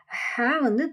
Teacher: ஹ தொண்டையோட நடுவுல இருந்து வரணும்.